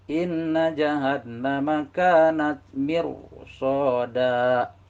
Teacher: ro-nya harus dibaca tebal, yakni mulut kita dimajukan ke depan